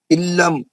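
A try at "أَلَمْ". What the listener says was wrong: لام پہ علم پڑھنے جا رہے ہیں، غلط ہو جا رہا. علم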